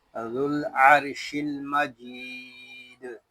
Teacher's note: دال ساکن میں کلکلا اور وقف بالاسکان